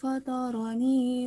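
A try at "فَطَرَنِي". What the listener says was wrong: Maaf, bukan fato ya. Falto. Jadi berat. Beda ketika kita membaca huruf ta. Ta kan enggak terlalu berat.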